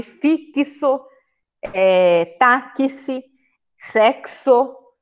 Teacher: em que uma única letra x tem o som de ks